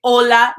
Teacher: the h and spanish makes no sound at all